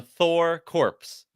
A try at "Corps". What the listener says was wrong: Core! It's core! You don't pronounce the P!